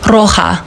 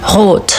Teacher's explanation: it's the rolling the tongue, and in German, the color red is rot. It's in the back of the throat